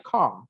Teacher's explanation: Kalau teman-teman buka kamus, car itu kan ya car, gitu kan? R-nya itu silent atau hanya diucapkan secara intrusif, sedikit sekali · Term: silent R